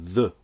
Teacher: tas comme le feu anglais pour faire le son S mais en sortant le bout de la langue entre les incisives